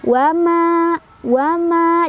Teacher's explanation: Cara bacanya 2 harokat aja. Wama, wama diayun. Kalau diayun 1 ayunan ya, jangan kelebihan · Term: mad tabi'i